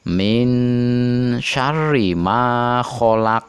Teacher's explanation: huruf qaf ada di akhir kata atau kalimat dan dia termasuk huruf Qalqalah dipantulkan begitu keras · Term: qolqolah kubro